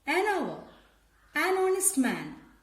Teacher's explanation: But H is silent and the words are beginning with a vowel sound. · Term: silent letter